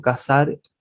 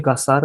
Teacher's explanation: el sonido de la s no tiene distinción con la z